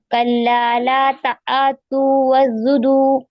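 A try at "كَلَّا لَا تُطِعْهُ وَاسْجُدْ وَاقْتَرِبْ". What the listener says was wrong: तातू क्यों पढ़ेंगे? ला तुतिहु तापेस्तु तो देती।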